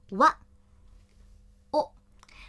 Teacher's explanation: 喔这个音现代日语已经不使用了，直接读成单元音